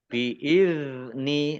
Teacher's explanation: ya bukan Qalqalah jangan dipantulkan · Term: bukan kolkolah